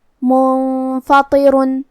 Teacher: کلمت منفطر میں یہاں نون ساکن ہے، پھر حرف الفا ہے. فا بھی حروف الاخفاء میں سے ہے تو ہم نون کو چھپاتے ہوئے اور غنہ کے ساتھ یہ حکم کو ادا کریں گے